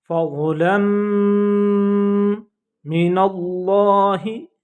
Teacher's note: लफ्ज़ अल्लाह का लाम थिक साउंड में पढ़ा जाएगा, मोटी आवाज़ में पढ़ा जाएगा